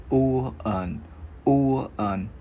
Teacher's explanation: Chữ U không có chu môi